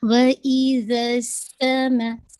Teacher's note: وَإِذَا make sure کیجیے گا، زال کا مخرج آپ کی جو ٹپ آف دا ٹنگ ہے، آپ کے سامنے جو فرنٹ ٹیتھ ہیں ان کے ایجز کے ساتھ لگے گی، ٹھیک ہے نا۔ وَإِذَا سین پہ وسلنگ بھی ہوگی، ہمس بھی ہے، ایئر آپ کی باہر بلو ہوگی۔